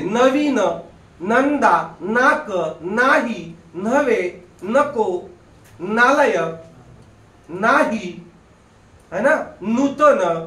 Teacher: जीभ दाताला लागते. म्हणजे तो दंतवर्ण आहे.